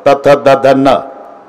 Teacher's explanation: तथ द ध न हे दंत्य आहे.